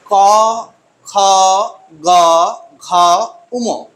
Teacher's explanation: এগুলোর উচ্চারণ স্থান হলো কণ্ঠ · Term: কণ্ঠ ধ্বনি